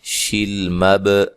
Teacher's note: با کو ہلا کر پڑھنا ہے، با حروف قلقلہ میں سے ہے